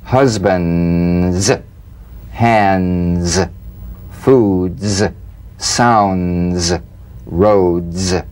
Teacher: [Music] the cognates the voiced tongue point plus tongue blade consonant pressed the tongue against the upper gum Ridge for the D drum beat and peel the tip down a bit as the Z vibrates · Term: resonant staccato zip